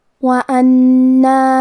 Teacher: حرف النون پہ تشدید ہے تو ہم 2 حرف کے برابر نون کو پڑھیں گے کیونکہ تشدید کی اصلیت 2 حرف ہے.